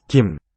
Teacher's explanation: It'll be lightly aspirated word initially